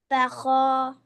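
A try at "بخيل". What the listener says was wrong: Baka, why? Look at the kha.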